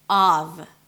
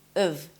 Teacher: When the word is stressed, the first vowel is the ah as in father, so you want to drop your jaw and relax your lips, and then the f is a v sound, always a v, of. · when it's reduced, it's pronounced as of. So the ah sound turns into a schwa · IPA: /ɑːv/, /əv/